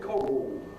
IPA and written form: ˈkɒgo (Coggle)